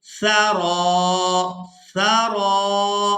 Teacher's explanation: सा को अदा करते हुए नरमी के साथ अदा करेंगे और सा की आवाज़ में सीटी की मिसल आवाज़ पैदा नहीं होनी चाहिए